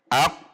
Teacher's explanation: Nah, sifat syiddah ini dibarengi dengan sifat khusus yang menempel pada huruf qaf adalah al-qalqalah. Sehingga pada saat sukun huruf qaf dibaca memantul setelah syiddah. Perhatikan, ak, tertahan atau syiddah, kemudian qa, pantulan.